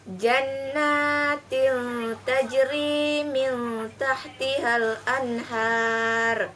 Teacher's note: Contohnya, jannatil tajri min tahtihal anhar, yaitu tanwin dan nun mati bertemu dengan huruf ta, maka dibaca samar-samar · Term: hukum ikhfa